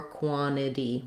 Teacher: So you either have quantity with two true T's or quantity. One T drops, the other one becomes a flap.